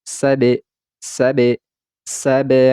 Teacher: huruf ba yang dalam keadaan sukun atau mati ini kita pantulkan suaranya